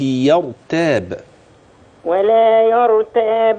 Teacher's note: افخم الراء وارق ما عداها من قوله